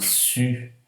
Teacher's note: essa vogal anterior, ou seja, feita na parte da frente da língua, porém arredondada.